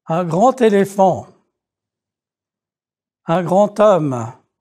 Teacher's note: if there is a d it becomes a T sound